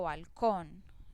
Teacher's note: Lo mismo si yo digo balcón, la sílaba que pronuncio más fuerte es con